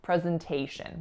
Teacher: The only other kind of interesting thing to note in this word is that that letter S is in fact making a Z sound. So a voiced Z sound, not an S as it would appear.